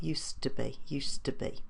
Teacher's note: that D does disappear and the to is weak doesn't say to it says to so we got used to